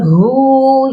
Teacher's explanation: یہاں پر ہا کی آواز سینے والے حلق سے آئے گی